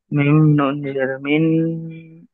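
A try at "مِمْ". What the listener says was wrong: মিম নুনজের মিন নয়, মিম নুনজের মিন হবে না, মিম মিমজের।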